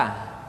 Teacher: ada pada tenggorokan yang terjauh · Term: huruf a